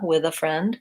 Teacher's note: you can easily link that and use a voiced with uh with a friend